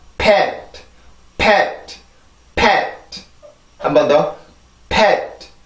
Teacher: 아주 부드럽고 약하게 소리가 끝이 나야 되는데 이 T 발음도 마찬가지로 폐쇄음이에요. 치조 폐쇄음인데 그 치조를 맡고 있는 혀의 힘을 강하게 주면 안 되고 내가 새롭게 공기를 올려서도 안 돼요. 내가 패까지 했을 때 입안에 남아있는 그 공기만을 이용해서 내가 T 발음을 내주면 돼요.